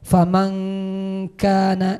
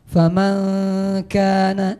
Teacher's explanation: Jadi huruf nun dan huruf kaf, suara nun mati dan suara kaf itu samar-samar. Jadi antara ada dan tiada gitu nah, samar-samar. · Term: ikhfa